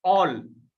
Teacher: क्योंकि जैसे आप बोलो ऑल बोलो ना ऑल तो ऐसे लगेगा कि आपका हंठ गोल हो रहा है। ऐसे ऑल बोलोगे तो भी ऐसे लगेगा आपका होठ गोल हो रहा है। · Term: वृत्ताकार स्वर